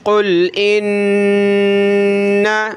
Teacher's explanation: قُلْ بڑا قاف ہے، موٹا کریں گے ، قاف لام پیش، قُل گلے سے